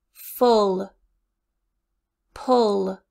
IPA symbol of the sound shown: ʊ